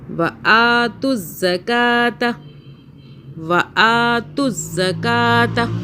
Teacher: وَآ کو کھینچا ایک الف کے برابر اور کا کو کھینچا